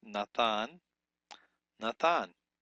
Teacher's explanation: Nathan retains the softness of the tav, or it's actually the thav without the dagesh lene in it